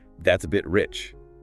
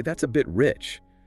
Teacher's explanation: with a rising intonation at the end, I'm genuinely asking if something is too expensive